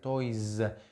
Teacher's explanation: Aquí tenemos un diptongo, no importa el tipo de sonido vocal, todos los sonidos vocales tienen voz, entonces cuando le pongamos esta inflexión que es la S, se va a pronunciar Z